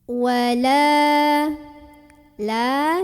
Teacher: cara membunyikan huruf lam yang barisnya Fatah ini dipanjangkan sepanjang dua harokat saja